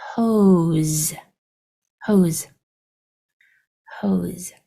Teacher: S is going to make its vibrating sound and say Z. And this E is silent because E's at the end are usually silent.